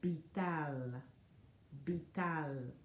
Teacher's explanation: So we make a soft sound with the lips. It's bilabial